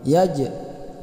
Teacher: ini huruf jim apabila sukun itu dibaca mantul qalqalah